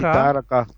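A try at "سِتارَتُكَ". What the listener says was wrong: नहीं हाँ, ता आखिर में है ना, तो ता का अपना हक अदा करना पड़ेगा ना हमको। सितारतुका,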